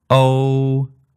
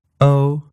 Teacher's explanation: oh that first valve is effectively the same in both languages the main difference here is that Cantonese goes all the way up to ooh at the end